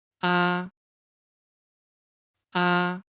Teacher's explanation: characteristics of these four tones flatten ah its pronunciation is flat the voice is in the highest position with no change from beginning to end · Pay attention to the pronunciation from medium to high. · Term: Rising tone, Flat tone